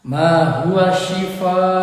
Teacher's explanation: huruf mad bertemu dengan hamzah dalam satu kata, dibaca panjang 5 harokat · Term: mad wajib muttasil